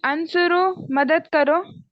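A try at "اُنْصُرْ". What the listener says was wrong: Sister, आंसर नहीं है, दो, दोबारा बोले, अलिफ के ऊपर पेश है, अनसुर उन शुरू है, अनसुर उन उन।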